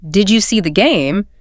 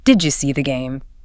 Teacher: >> A question like did you see the game turns into did you see the game? The d and the y smashed together to make a j sound.